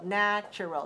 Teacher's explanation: natural is pronounced with a stress on the first syllable